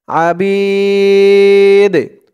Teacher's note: এই দালটা কলকলার হরফ হয়ে গেছে ধাক্কা দিয়ে পড়তে হবে